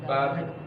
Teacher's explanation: Misalnya bab, oh kan berhenti kan? Bab, oh berhentinya ketika kedua bibir ini bertemu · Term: huruf ba